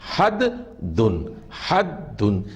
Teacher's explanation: حد میں بھی جو دال ہے اس پر تشدید ہے، اور یہ حرف بھی 2 مرتبہ پڑھا جائے گا. حدن میں 2 دال ہیں، حد دن، حد دن.